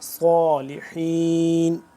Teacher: صاد کو موٹا، سین کی آواز لیکن موٹا